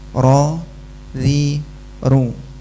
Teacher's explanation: Yang ro tebal, yang ri tipis. Yang ru tebal lagi. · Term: hukum ra